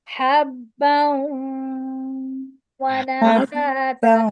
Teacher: نہیں، یرملون حروف یرملون ہے نا، واو حروف یرملون میم لام واو نون، حروف یرملون ہے، حروف یرملون یرملون ہے، تو ہم با کو واو سے ملاتے وقت کھینچیں گے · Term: ادغام